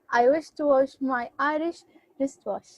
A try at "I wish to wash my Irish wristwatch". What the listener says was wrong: Excellent. Watch. We say this watch. So this sound is a ch sound, not a sh.